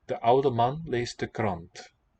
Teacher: Well, oude, they do like French, vocalize the L.